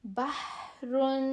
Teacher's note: ہا کی آواز درمیان حلق سے رگڑ کھا کر نکلتی ہے